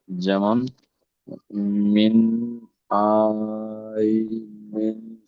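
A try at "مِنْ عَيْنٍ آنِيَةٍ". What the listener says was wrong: আইন ইয়া জাবার, এখানে আইন ইয়া জাবার আই, তো আই টান হবে না, আই বলে টান দিচ্ছেন, হরফে লিন টান হয় না। আইন আনিয়াতিন, মিন আইনিন আনিয়াতিন, ঠিক এমনটাই হবে।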